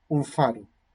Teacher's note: asimila su punto de articulación que canónicamente es a no hablar se adapta y se asimila a la consonante que le sigue si la consonante que viene después es vila vial la nasal